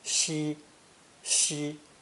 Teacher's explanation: this character is pronounced first tone shi shi and unsurprisingly means west